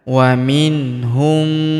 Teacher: Wa minhum, mim sukun bertemu huruf ma yang berharokat tasydid, maka mim sukunnya melebur ke huruf ma yang berharokat tasydid ini kita tahan dan kita tekan, serta kita dengungkan 2-3 harokat